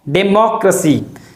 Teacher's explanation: There is a stress on the sound mo.